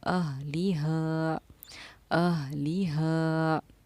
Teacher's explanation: ہا کو ہم 2.5 الف کی مقدار کے برابر کھینچ کر پڑھتے ہیں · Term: مد منفصل